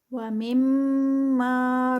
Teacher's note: اور مم پہ غنہ آئے گا، اور ما جو ہے وہ 2 کاؤنٹس پہ